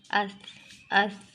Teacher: तो इसमें थोड़ी सी ज़बान दांत से बाहर रखते हैं, दांत के सिरे पे सही तरह लगाना होता है।